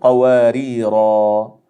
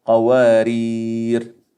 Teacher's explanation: هذه الألف تسقط في اللفظ ولا تنطق أبدا، إنما هي فقط ثابتة في الخط